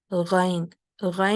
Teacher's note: जब हम गैन को अदा कर रहे हों तो आपने एक चीज़ का ख्याल रखना है कि इसके साथ सांस को जारी नहीं करना। गैन, गैन जो है ये इसमें आवाज़ जारी रहेगी लेकिन इसमें सांस नहीं होगी